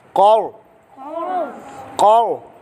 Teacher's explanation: قاف بھی موٹا اور را ساکن سے پہلے زبر آئے تو را بھی موٹا ہوتا ہے